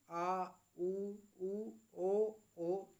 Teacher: जीभ जो हमारी है वह पीछे की तरफ विचलन कर रही है · जब आप बोलेंगे तो जीभ जो है आपकी वो पीछे की तरफ में को जाएगी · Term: पश स्वर, पश्च स्वर